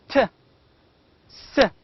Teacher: These two sounds are voiceless. They make no vibration. We do not feel any vibration while pronouncing these two sounds, t, s.